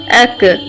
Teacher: باریک کاف بھی زبان کی جڑ سے ادا ہوتا ہے، لیکن اس میں زبان کی جڑ تالو کے سخت حصے سے ٹکراتی ہے جو قاف کے مخرج سے تھوڑا آگے منہ کی طرف ہوتا ہے.